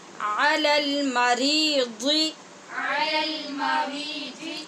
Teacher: یہاں را زیر والی ہے، اس کو باریک پڑھیں گے.